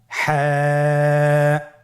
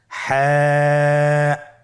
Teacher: হা হরফটি উচ্চারিত হবে কণ্ঠনালীর মধ্যখান হতে। গলা চিপে ধরে আপনি উচ্চারণ করুন।